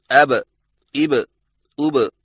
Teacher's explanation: हरफे बा पर जज़म आए तो दोनों होंठ आपस में मिलकर अलग हो जाते हैं और कलकला होता है